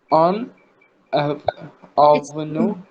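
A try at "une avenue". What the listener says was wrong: It's yun. Children कह रही हूँ दोस्तों, आपको यू की साउंड निकालनी जरूरी है. This is not English polite. You have to से यू. यून avenue.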